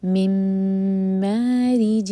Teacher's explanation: جیم کے نیچے کسرہ کی تنوین سلائڈنگ، اس کے بعد میم ہے تو یہاں پر بھی ادغام ہے غنہ کے ساتھ، میم کو ہولڈ کیا جائے گا.